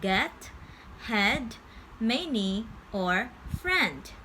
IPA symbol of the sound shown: ɛ